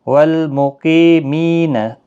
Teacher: قی یا مدہ ہے، می بھی یا مدہ ہے، دونوں کو ایک ایک الف کی مقدار کے برابر کھینچ کر پڑھیں گے۔ قاف مستعلیہ ہے، پر پڑھا جائے گا۔